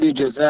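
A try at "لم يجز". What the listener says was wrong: লাম ইয়াজুজ, ইউজজা না এটা, লাম ইয়াজুজ। বলাম, লাম ইয়াফাল, লাম ইয়াফাল আলা আছে না, লাম ইয়াফাল, ওই যে মিজানো বলছেন লাম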